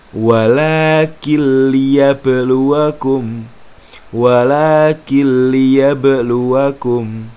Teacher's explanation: Jadi nun sukunnya tidak usah dibaca atau dileburkan, dihilangkan. Langsung melompat ke huruf berikutnya, masuk ke huruf berikutnya. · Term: idgham bila gunnah